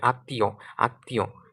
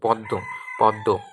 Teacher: সামান্য অনুনাসিক হয়। অর্থাৎ মটা উচ্চারণের সময় কি বাতাস কিছুটা নাক দিয়েও বের হবে।